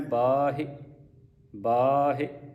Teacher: ਬਾਹਿ ਇਸ ਤਰ੍ਹਾਂ ਬਬੇ ਕੰਨਾ ਹਾਹਿ ਸਿਹਾਰੀ ਬਾਹਿ ਇਨਾ ਕਿਉਂਕਿ ਜਿਹੜੀ ਪਹਿਲੀ ਮਾਤਰਾ ਹ ਕੰਨੇ ਵਾਲੀ ਇਹ ਲੰਮੀ ਹੋਵੇਗੀ ਤੇ ਜਿਹੜੀ ਸਿਹਾਰੀ ਹ ਥੋੜੀ ਵਾਰ ਕੱਢੀ